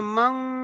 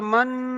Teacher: গুন্না হচ্ছে যে নাকের ভিতরে শব্দকে ধরে রাখতে হবে। নাকের, আপনারা তখন নাকে হাত দিয়ে দেখবেন নাক বাজছে।